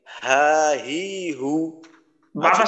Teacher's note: যেমন আমাদের বাংলা হয়ের মতোই হয় আকার হা, হয় রসিকার হি, হয় রসুকার হু, আওয়াজটা যেন কোথাও বাধাগ্রস্ত না হয়, একেবারে হলকে শুরু থেকে ধাক্কা লেগে পুরা জায়গা একেবারে বাধাগ্রস্ত হওয়া ছাড়াই